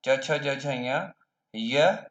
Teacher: ये वर्ण तालव्य कहलाते हैं, क्योंकि इनका उच्चारण जब जिह्वा तालु को स्पर्श करती है तभी इनका उच्चारण संभव होता है, तभी इनका उच्चारण होता है।